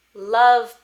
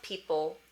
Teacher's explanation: For me, love is happening in the front of my mouth, and people, ol, is happening in the back.